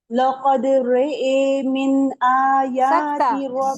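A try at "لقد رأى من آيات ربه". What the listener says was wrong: सकता छोड़ रहे हैं आप सब. रे रे रॉ नहीं रे. फिर पढ़िए.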